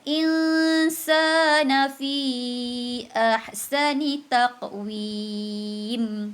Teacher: Ikhfa haqiqi. Perlu dibaca dengan dengung. Dua harakat.